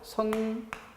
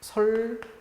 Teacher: 그때 뭐가 되는가 하면 설치음화가 되는데 비음화의 역현상이라고 할 수 있죠. 리을의 영향을 받아서 앞에 것이 리을로 바뀌는 경우입니다.